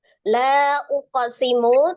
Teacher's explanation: mim berharokat tingkatan gunnahnya angkos tingkatan yang keempat ya, sangat tidak sempurna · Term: gunnah naqisah